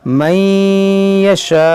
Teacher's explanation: وقف کریں گے تو حمزہ ساکنہ ہوگا, تو اس میں جھٹکا ہوگا